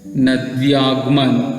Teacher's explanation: अब इसके बाद देखते हैं नद्यागमन, ई, दीर्घ ई के बाद, दीर्घ ई के बाद यहाँ के बाद क्या आ गया, कोई दूसरा स्वर आया है, तो आ दूसरा स्वर है, तो ई और आ मिलकर या में परिवर्तित हो गया